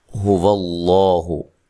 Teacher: لفظ اللہ کو خوب موٹا کرنا ہے، اس سے پہلے حرف پر زبر ہے